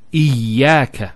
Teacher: Notice the ya gets a double vowel because of the shadda there.